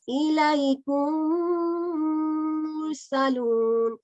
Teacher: So Idgham means to merge, and we are merging the sound of Mim Sakina into this Mutharik Mim. And Mim Yorina is our Gunna letter, so we do Gunna here, meaning 2 count nasal sound.